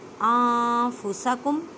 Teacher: نون ساکن کے بعد فا ہے اور فا حروف اخفا میں سے ہے، ان نہیں کہنا، نون ساکن کی آواز کو چھپانا ہے۔ أَنفُسَکُم، میم ساکن کے بعد واو ہے تو اظہار شفوی کا قاعدہ کریں۔